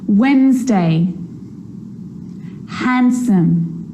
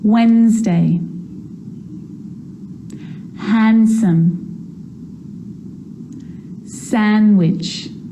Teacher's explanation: I'm not pronouncing the D in sandwich I'm just pronouncing the consonant n sound before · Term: silent